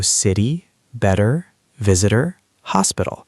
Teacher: When a T is between two vowels in an unstressed syllable, it sounds like a soft D. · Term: flap T